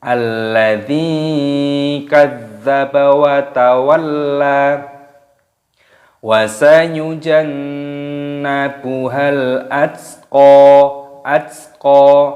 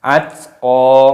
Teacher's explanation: taknya sukun dimatikan, qafnya dibaca panjang